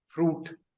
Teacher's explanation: फ्रूट का last sound ट है. ट हमारे लिस्ट में है प ट क. So that means it is a voiceless sound.